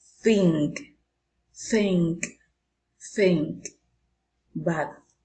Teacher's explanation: The place of the articulation is dental. Articulation is dental. The manner of articulation is fricative. The sound is voiceless. · the air is forced between the tongue, and the upper front teeth, creating friction